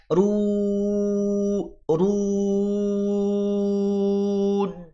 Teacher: Ru-nya tebal, harokat domah, jangan sengau.